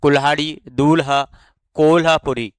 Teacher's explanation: हिंदी में ल का महाप्राण व्यंजन लह विकसित हुआ है।